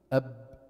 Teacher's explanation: انقطاع النفس عند النطق بالحرف، وهو من الصفات القوية. انقطاع النفس عند النطق بالحرف وهو من الصفات القوية، وهو ضد الهمس. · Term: الجهر